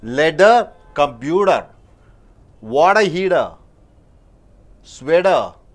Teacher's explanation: T in the middle of the word, if it is followed and preceded by a vowel, T is pronounced as D